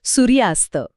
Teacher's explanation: >> सूर्याच्या शेवटी अ आहे आणि अस्तची सुरुवात अ ने होते. हे दोन्ही अ एकत्र येतात आणि जीभ दोनदा अडखळण्याऐवजी थेट एक दीर्घ आ तयार करते